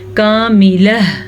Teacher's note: وقف کیا ہے تو گول تا گول ہا بن جائے گی اور ہا کی آواز ضرور آنی چاہیے